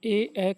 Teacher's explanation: स्वर ए का उच्चारण स्थान कौन सा है? तो इसका उच्चारण स्थान कंठ तालु होता है।